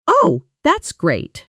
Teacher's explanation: the exact same words said with a flat, slightly rising, sarcastic tone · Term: intonation